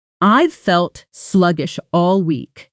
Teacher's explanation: Sluggish all often blends together sounding closer to sluggish shall with the shh sounds melting into one another.